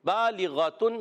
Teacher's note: غین حرف مستعلیہ میں سے موٹا کر کے پڑھیں گے